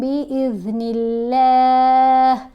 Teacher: یہاں اب لام کو باریک پڑھیں گے کیونکہ نون کے نیچے زیر آ رہی ہے